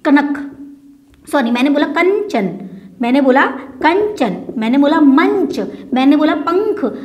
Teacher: जब हम इन शब्दों का उच्चारण करते हैं तो हमारे नाक से हवा आती है ना। तो यानी कि ये जो पंचमाक्षर है इनका जो उच्चारण स्थान होता है वो नासिका होती है, ना कि कंठ तालु वगैरह होता है।